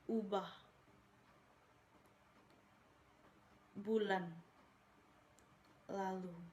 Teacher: Fonem U adalah vokal atas belakang bulat. Vokal ini dibentuk dengan kedua bibir agak maju ke depan dan agak memudar serta ke belakang.